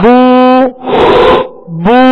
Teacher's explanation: ہونٹوں کو گول کریں گے. پیش کی ادائیگی میں ہونٹوں کو گول کریں گے تو معروف پڑھا جائے گا ورنہ اگر ہونٹوں کو گول نہیں کیا تو یہ مجہول پڑھا جائے گا.